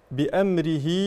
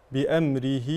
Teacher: صله صغرى هذه الهاء تمد بمقدار حركتان